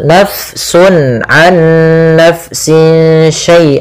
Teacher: fanya dialirkan karena fa memiliki salah satu sifat yaitu sifat hames. Yang di mana dia jaroyanun nafas harus mengalir nafas kita di dalam melafalkannya.